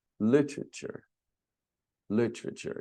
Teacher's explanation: We don't say the E in literature, the first E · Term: silent syllables